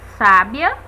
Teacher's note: Sábia, temos a sílaba tônica sa